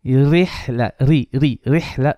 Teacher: Ra is going to be flat because of a kasra.